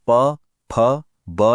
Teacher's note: जब दोनों होंठ मिलते हैं तो प फ ब जैसी ओष्ठय ध्वनियां बनती हैं।